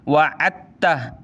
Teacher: दाल को नहीं पढ़ना, ये लिखाई में है, पढ़ा नहीं जाएगा, ठीक है। वअत्तह, ऐन ता ज़बर अत्ता, ज़बर ता अत्ता, हा उल्टा पेश हु वअत्तह, ठीक है।